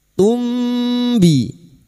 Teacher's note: Mim sukun dibaca samar dan mendengung selama 3 harokat. Pada saat menyamarkan bunyi mim sukun, kita sudah siap-siap untuk membunyikan huruf ba, maka bunyinya tumbi. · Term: ikhfa syafawi